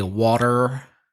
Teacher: the R sound at the end of words is stronger in American English